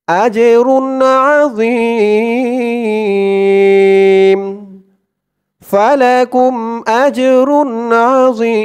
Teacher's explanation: ওকফ করার কারণে এই এক আলিফ টানটা 3 আলিফ টান হয়ে গেছে